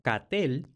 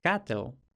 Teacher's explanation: En francés Normando no se había palatalizado el sonido K ante la vocal A. De ahí que del latín capitale tuviéramos el francés normando catel, de donde sale el inglés actual cattle, que significa ganado.